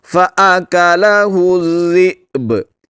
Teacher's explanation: حمزہ کو ساکن کریں گے اور با کو قلقلہ کر کے پڑھیں گے